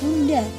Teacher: bunyi letupan bilabial atau P dan B dilafalkan dengan jelas dan baik jika terdapat di awal, di tengah maupun di akhir kata.